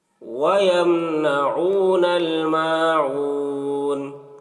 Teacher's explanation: العین کو حلق سے ادا کر رہے ہیں